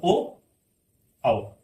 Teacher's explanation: ओ बोला जाता है कंठोष्ठ से